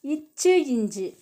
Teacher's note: நாவின் இடை அன்னத்தின் இடையடி